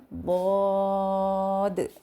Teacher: इस हर्फ की अदायगी इस तरीके से होगी कि जुबान के जो कॉर्नर है उसको ऊपर के दांतों की जो जड़े हैं रूट्स जैसे जिसको हम मसूड़े कहते हैं उनके साथ लगेंगे तो उस वक्त यह हर्फ अदा होगा दद नेक्स्ट हमारे पास